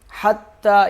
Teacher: منفکین حتی، فکی، یہ فا کاف کے ساتھ سختی سے ملے گا، اور یا کو 1 الف کے برابر کھینچیں گے۔ حتی، یہ ہا جو ہے گلے کے درمیان سے، حلق کے درمیان سے ادا ہوتا ہے